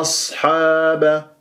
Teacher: ص ساكنه مفخمه مرتبه رابعه من احرف الصفير يجري فيها الصوت والنفس